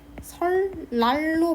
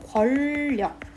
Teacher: 니은이 리을을 만나서 리을로 교체되는 현상을 유음화라고 얘기를 합니다